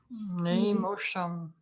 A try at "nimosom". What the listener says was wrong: And I would say Nimosom. I wouldn't have the H. That's about the only difference. Nimosom. And I wouldn't have two O's. M-O-S, M-O, Mosom. No H.